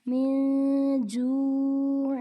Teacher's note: نون ساکن کے بعد جیم حروف اخفا میں سے ہے، اس لیے یہاں پر غنہ کر کے پڑھیں گے